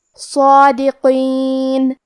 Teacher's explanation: قاف کو ہم موٹی آواز میں پڑھیں گے. آخری میں نون پہ رکیں گے تو اس پہ جزم سے رکیں گے لہذا ہمیں نون کو ظاہر کرنا ہے.